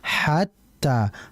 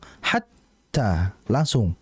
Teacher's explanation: jangan imtidad, jangan memanjangkan ha ketika mau masuk ke ta, sehingga jangan dibaca hat, jangan seperti itu.